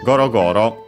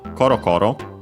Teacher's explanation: By the way, it's specified large and heavy because we have the voicing of the consonant go, because actually there is also the corresponding adjective with the unvoiced consonant koro koro, which is lightly rolling of a small and round thing.